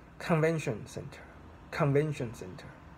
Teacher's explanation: So you should stress on the first word. And usually when you stress, it's not only just stress, you also like put a little bit higher in pitch in this word.